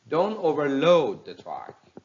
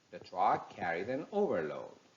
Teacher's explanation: if they are verb they take stress on the second syllable if they are noun they take stress on the first one